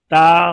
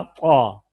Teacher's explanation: مثلا تا اور طا، تا طا، تو اب تا اور طا مخرج بھی ایک ہے، صفات بھی ایک جیسی ہیں، آواز بھی ایک جیسی ہے، تو ہمیں کیسے معلوم ہوگا؟ تو صفات بتاتی ہیں کہ تا باریک ہے، طا پر ہے